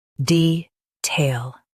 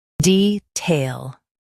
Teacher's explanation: US stresses tail. UK stresses de.